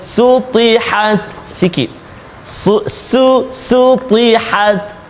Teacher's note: huruf ta yang sukun, ta yang mati, maka kena hati-hati supaya ada angin dia.